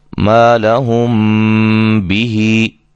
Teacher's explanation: میم ساکن کے بعد اگر با متحرک آ جائے تو وہاں اخفا مع الغنہ کر کے پڑھیں گے، یعنی کہ غنے کے ساتھ اخفا ہوگا